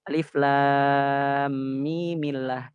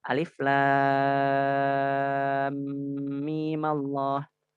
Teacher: Karena kita ingin menjaga ketebalan lafzul jalalah sehingga dia takhallus min iltiqa'i sakinahnya dengan cara memberi harokat fathah pada sukun pertama.